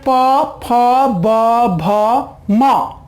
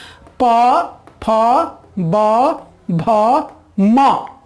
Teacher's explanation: हमारे जो नीचे के ओठ और ऊपर के जो ओष्ठ है ये दोनों आपस में स्पर्श करते हैं, चिपकते हैं, संपर्क में आते हैं या आपस में सटते हैं, तब इनका उच्चारण होता है।